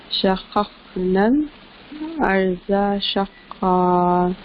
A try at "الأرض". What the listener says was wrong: ارض بہت اور ہیوی کیجیے